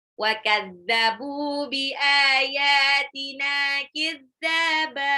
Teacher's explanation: Wa kadzabu, ba-nya 2 harokat mad tabi'i, bi ayatina, alifnya 2 harokat, ya-nya 2 harokat, nunnya 2 harokat, kidzaba, dalnya mad tabi'i, ba-nya mad iwad.